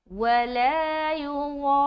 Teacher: ठीक है, तो यहाँ पर लंबा करें, वला युगार, रा को मोटा भी रखना क्योंकि रा मुशद्ददा है, तशदीद वाली रा है और उसके ऊपर ज़बर है, तो हम इसको मोटा भी अदा करेंगे।